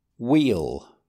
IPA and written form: wiːl (wheel)